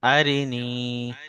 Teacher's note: ইয়া মাদ্দাকে এক আলিফ পরিমাণ টান দিয়ে পড়তে হবে।